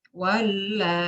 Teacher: mengganti hamzah dengan ya sukun juga ma'al idgham · Ya, ma'al izhar. Jadi hamzanya diganti dengan ya sukun. Membacanya izhar.